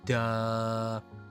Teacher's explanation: I speak with a A vocal fry sound will it sounds kind of like duh the creak in my voice